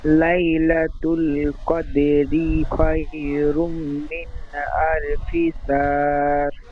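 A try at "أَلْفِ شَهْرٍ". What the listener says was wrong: আলফি শাহর বলে টান দিচ্ছেন, এখানে কোনো মাদ্দা হবে না, টান হবে না। আলফি শাহ, শাহ, শাহ, তারপরে রটি হালকা ভাবে রর আকৃতি করেন। আলফি শাহ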